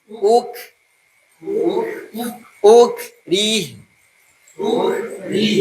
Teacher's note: U terbuka nanti un-nya monyongin pas ke kaf bibir kita biasa lagi.